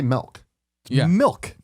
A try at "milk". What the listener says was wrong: you say like Mel